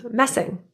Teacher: a double s is still just pronounced as one s sound. It's not elongated or anything.